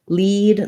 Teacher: lead like a leader has my e vowel that's my tense high front vowel